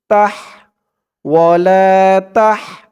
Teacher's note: তাহার উচ্চারণটা গলার ভিতর থেকে চিকুন হয়ে বের হবে